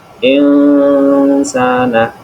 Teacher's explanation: insana itu disebut bacaan ikhfa, dibaca dengan cara samar dan mendengung